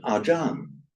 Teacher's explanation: whenever r or a l sound comes at the end of a word in Thai, it becomes an n.